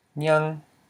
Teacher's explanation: we have a low consonant, ny, plus a live syllable, ang, because it ends in a nasal. The sound is a nasal sound. So therefore it's a high tone. So this word is pronounced as nyang.